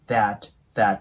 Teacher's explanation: 上下の歯で舌を挟んで